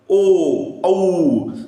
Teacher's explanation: कंठ म्हणजे कंठ आणि ओठ ओठाचा काय होतोय चंबू होतोय